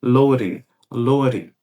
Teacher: É como se esse D aqui ele perdesse o som de D e ficasse como se fosse com o som do nosso R fraco aqui no português.